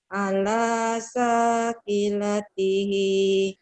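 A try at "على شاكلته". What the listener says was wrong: Shinnya nggak keluar. Ala sya. Ala sya. Ala syakilatihi.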